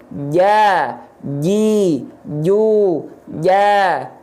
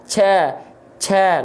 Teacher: Dia keluar dari tengah lidah, ditempelkan ke langit-langit. Ya, nempel, jangan sampai ada celah. Biar apa? Biar nafas nggak nongol, biar nafas nggak bocor. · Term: jim